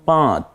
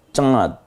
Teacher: এই ন নকে নাকের বাঁশিতে নিয়ে একটু গোপন করে গুনগুন আওয়াজ করে পড়তে হয় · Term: ইখফা